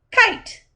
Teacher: the k sound is blocked by the back of the tongue the sound is a consonant sound it is clipped and unvoiced